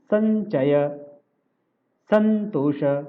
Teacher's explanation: सम का म जो है ऊपर बिंदी हो गया, न में उच्चारण चला गया था